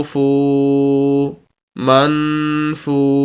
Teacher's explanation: ہم فا کو واو کے ساتھ ملا رہے ہیں اور واو کو لمبا کر رہے ہیں، فا کو واو کے ساتھ ملا کر لمبا کر رہے ہیں لفظ کو۔ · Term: واو مدہ